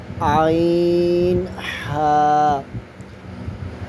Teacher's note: عین ہا حلق کے درمیان والے حصے سے ادا ہوتے ہیں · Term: حروف حلقیہ